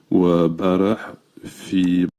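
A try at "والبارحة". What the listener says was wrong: Wabarah. En fait, il a voulu dire walbarih. Al-bariha. Al-bariha, il a dit wabarah. Barah. En fait, c'est le bariha.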